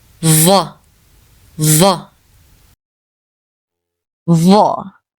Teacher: when you pronounce the sound of dhaa, you put more than the tip of the tongue between your teeth.